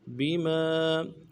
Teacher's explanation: ارجلہم، ہم، بما، بما، با کو نرم سے ادا کرنا ہے، میم کے بعد الف مدہ ایک الف دال میں کھینچیں گے